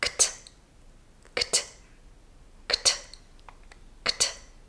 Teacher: It's one fast movement after another, but only one main release of air at the end.